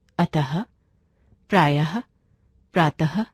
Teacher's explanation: इसका उच्चारण आधे ह के जैसा होता है। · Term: विसर्ग